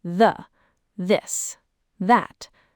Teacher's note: The first th sound is voiced meaning your vocal cords vibrate when you make it. You can feel this by placing your fingers lightly on your throat.